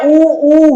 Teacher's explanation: होठों की आकृति गोल हो रही है, इसका मतलब इनका उच्चारण तो कहां से होगा, होठों से होगा, इसलिए ये क्या हो जाएंगे, ओष्ठे।